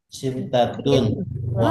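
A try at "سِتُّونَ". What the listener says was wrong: itu apa sih tantun? situn. Situn wa khamsuna.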